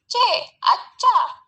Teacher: Sedangkan fonem C, cara artikulasinya itu paduan atau afrikat, dan tempat artikulasinya juga di palatal.